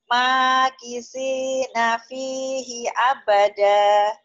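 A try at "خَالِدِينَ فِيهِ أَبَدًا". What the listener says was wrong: Jangan abadah ya, abada direm.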